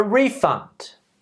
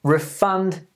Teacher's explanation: nouns stressing at the beginning verbs stressing the last syllable